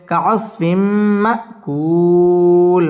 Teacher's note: তানবিনের বামে মিম আসছে মিম ইদগামে বা গুন্নার হরফ গুন্না সহ মিলিয়ে পড়তে হবে